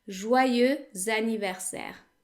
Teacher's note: So basically what this means is that the X becomes pronounced and we pronounce it as if it were a Z. Joyeux anniversaire. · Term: liaison